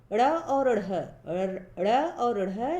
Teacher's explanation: ड़ और ढ़ हिंदी के विशेष व्यंजन हैं। इनके उच्चारण में जीभ को ऊपर उठाकर आगे की ओर फेंका जाता है, यानी उच्छिप्त किया जाता है। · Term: उच्छिप्त व्यंजन